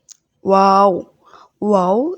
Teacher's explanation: ওয়াও, ওয়াও দুই ঠোঁটের মাঝের ফাঁক হতে বলতে হবে।